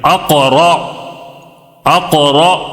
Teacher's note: جی ہاں موٹا پڑھیں گے. کیوں؟ را کے اوپر زبر آیا ہے.